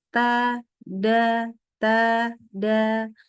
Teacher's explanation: Gusi yang bagian dalam, ke arah langit-langit. Di mana untuk huruf ta dan dal sama-sama pangkal lidahnya di belakang itu adalah turun. Jadi bacanya tipis ta, da, ta, da. · Di mana makhrajnya itu ujung lidah yang ketemu dengan pangkal gigi seri atas. Pangkal gigi seri atas itu adalah tempat tumbuhnya gigi seri.